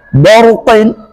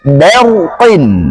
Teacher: Kemudian ba harus dibaca tipis karena dia sifatnya istifal.